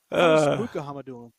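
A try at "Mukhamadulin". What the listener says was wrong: No, the K. It's like Habibulin. Think of Habibulin. Think of how you pronounce Habibulin. You don't say Kabi. You don't say Kabibulin, right? You say Habibulin.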